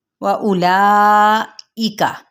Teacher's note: واو ہونٹوں کی نا تمام گلائی کے ساتھ حمزہ کی پیش کو لمبا نہیں کریں گے، لا پہ 4 حرکات کے برابر ہم اسے کھینچیں گے، اس پہ کھڑا زبر بھی، اور یہ دیکھیں ایک مد آپ کو سامنے نظر آ رہی ہے۔